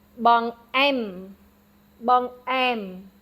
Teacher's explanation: the second syllable is accented